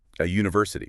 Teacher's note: a university, because university starts with a Y sound